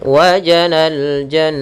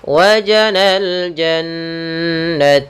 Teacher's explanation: Cara membacanya ditahan suaranya maka dan dimasukkan ke rongga hidung. Wajanal jan masuk rongga hidung. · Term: bacaan ghunah